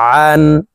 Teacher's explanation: আইন হরফকে হলকের মধ্যখান থেকে উচ্চারণ করে পড়ব কারণ আইনের মাখরাজ হালকের মধ্যখান থেকে হবে আইন নুন জবর আন